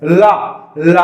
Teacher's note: ला का उच्चारण स्थल दंत, यह दंत मूल से आता है। आप अभी के लिए दंत समझ लें।